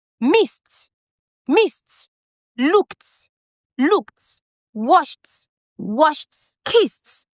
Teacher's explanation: When the ed comes after a voiceless sound, it goes t, t.